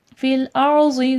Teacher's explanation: ضاد حرف مستعلیہ ہے، موٹا کر کے پڑھا جائے گا